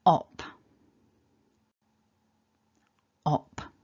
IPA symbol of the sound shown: ɒ